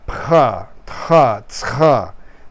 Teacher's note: you have this kind of friction in the back of your tongue combined with the p, t, or ts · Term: uvular fricative